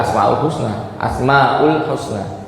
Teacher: memang orang Arab itu membaca huruf mad itu hanya dengan dua harakat